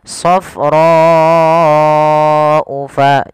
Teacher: panjangkan ra-nya 4 harokat, jangan dikurangi. Safra'u fa, jangan hanya safra'u fa.